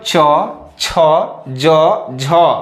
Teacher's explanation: बोलिए दांत के ऊपर वाला जो हिस्सा है उससे आपका जीभ टकरा के आ रहा है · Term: तालव्य वर्ण